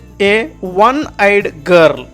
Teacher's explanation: ಒನ್ ಅನ್ನುವಾಗ ವ ಶಬ್ದವನ್ನು ಬಳಸಿದ್ವಿ, ಓ ಅಲ್ಲ